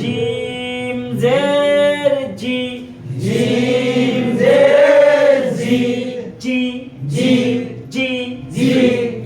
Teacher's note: জিহ্বার মধ্যখান তার বরাবর উপরে তালুর সঙ্গে লাগাইয়া শক্ত করে লাগাতে হবে